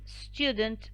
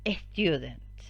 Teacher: spanish speakers tend to add an extra schwa before the initial cluster